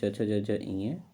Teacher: च वर्ग का उच्चारण होता है तालु से